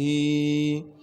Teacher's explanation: ہا کو صاف کر کے گلے سے نکالیں گے، گلے کا وہ حصہ جو سینے کی جانب ہے